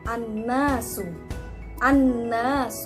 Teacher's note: pembahasan yang ketiga itu mengenai guna Hai apa itu guna-guna adalah apabila mim bertasydid atau Nun bertasydid dan dibacanya itu berdengung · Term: gunnah